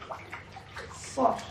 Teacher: sedikit mencuit seperti cuitan burung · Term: sifat sofir